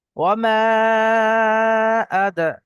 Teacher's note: এক আলিফ পরিমাণ টান হবে, কিন্তু তার পরবর্তীতে অক্ষরে, তার পরবর্তীতে শব্দের মধ্যে শুরুতে আলিফ অর্থাৎ হামজা এসছে। তো হামজা দ্বিতীয় শব্দের শুরুতে এসছে, তাহলে এটা মধ্যে মুনফাসিল 2 থেকে 3 আলিফ পরিমাণ টান দিয়ে পড়তে হবে